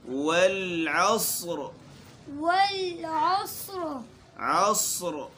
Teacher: عصر کے آخر میں را کو ہم موٹا پڑھیں گے۔ والعصر عصر سین، یہ اکثر جو ہے اگر توجہ نہ دے تو یہ سین کی طرح پڑھا جاتا ہے، تو ہماری کوشش ہو کہ ہم اس کو صاد پڑھیں، موٹا صاد۔